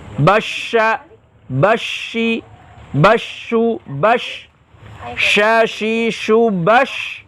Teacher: diucapkan dengan menyemburkan nafas dari dalam mulut. Jadi pengucapannya nafas tersembur keluar. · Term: tafasyi